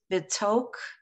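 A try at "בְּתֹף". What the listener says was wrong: What's that ending? Look at that ending letter in that second word.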